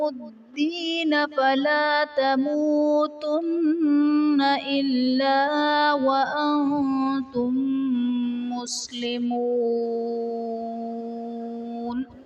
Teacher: وَأَنتُم میں نون ساکن کے بعد حروف اخفا میں سے تا ہے تو یہاں پر اخفا کا قاعدہ ہوگا، یعنی نون ساکن میں ہم غنہ کر کے پڑھیں گے۔